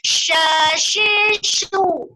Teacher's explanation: Waktu menyebut shu, wajar. Karena itu bibir harus monyong ke depan.